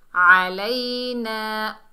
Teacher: आइन को हलक के दरमियान से अदा करेंगे